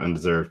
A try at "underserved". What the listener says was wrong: I think you said undeserved. You people don't deserve this.